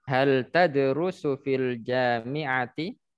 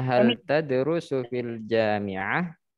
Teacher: Kalau hidup dia, kita baca ti ya. Tapi kalau kita sukun, maka jadinya hal tadrusu fil jami'ah.